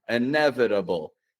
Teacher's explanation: It's got one of those flap T's. Real light and quick